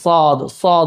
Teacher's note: നാവിന്റെ അറ്റം രണ്ട് പല്ലുകൾ മുകളിലത്തെ മുൻപല്ലിന്റെയും താഴത്തെ മുൻപല്ലിന്റെയും സെന്ററിൽ ആയിട്ട് തട്ടണം